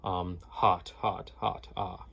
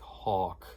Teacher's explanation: I am trying my best to keep a bright ah, rather than a sort of like aw. Rather than going ah, I'm trying to go ah, like the word hot, versus the word like hawk.